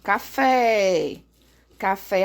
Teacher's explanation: a sílaba tônica é a última, então ela é uma oxítona